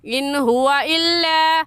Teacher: نون ساکن کے بعد حروف ہلکی حمزہ ہا عین ہا غین خا میں سے ہا گئے، اس لیے ان پر غنہ نہیں کریں گے